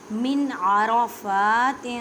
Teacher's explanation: اظہار کا مطلب ہے ظاہر کرنا. نون ساکن کی آواز کو ظاہر کریں